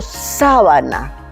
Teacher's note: si yo digo sábana, la sílaba tónica es sa